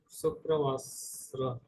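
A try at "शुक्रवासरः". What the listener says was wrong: Sta nahi bolna hai, sh bolna hai. Shukravasarah.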